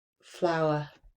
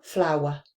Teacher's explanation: So on words like tower and flower, I am adding a w in there.